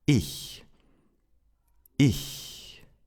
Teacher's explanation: Or in other words, you keep the same mouth position, but you whisper. Your vocal cords are not vibrating anymore. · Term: front CH